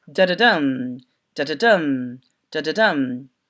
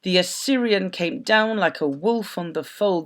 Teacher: And it says 0, 0, 1, so unstressed, unstressed, stressed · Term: anapestic rhythm